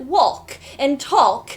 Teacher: and I always pronounce the L